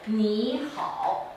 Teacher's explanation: So in books we're consistent, but if you listen with your ears, 你好 is actually a second tone and a third tone